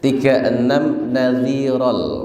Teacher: Nadhiran karena kemudian ada lam maka kita langsung masukkan menjadi nadhiral.